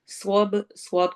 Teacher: صواب کو موٹا، با پہ قلقلہ